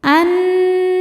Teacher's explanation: Karena nun bertasydid. Cara bacanya berdengung. Tahan dengungannya kurang lebih dua harakat. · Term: ghunah musyaddadah